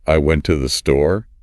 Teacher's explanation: I'd probably emphasize went and store. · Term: sentence stress